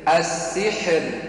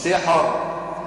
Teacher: السحر ترقيق في الراء مش سحر